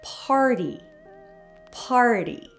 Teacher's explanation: sounds more like Part D party when we say it quickly notice how the T sound in party sounds softer almost like a d